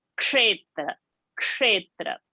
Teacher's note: Ka and a sh sound together, and not the normal shankar sh. It is sh, the murdhani sh. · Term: ksha pronunciation